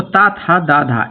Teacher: तो ता था दा धा यानी कि ता वर्ग के अंतर्गत आता है और ये वर्ण जो व्यंजन है ये दंत्य वर्ण कहलाता है। इसका उच्चारण स्थान दांत होता है